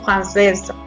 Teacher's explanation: vamos a formar esta s un poquito más como sonido de Z lo vamos a vibrar